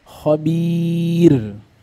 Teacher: اي راء ساكنه قبلها ياء ساكنه حكمها الترقيق قال نحو خبير لاحظ الراء ساكنه الوقف وقبلها ماذا ياء ساكنه